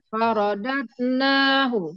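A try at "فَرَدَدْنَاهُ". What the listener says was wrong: Nah, itu masih dad. Yang benar faradad. Dade. Yang tadi mungkin suaranya kurang terdengar juga ya. Jadi cepat dan kuat sifatnya. Jadi harus kuat. Faradadnahu. Jadi harus bacanya harus kuat, Bu, untuk kol-kolah ini.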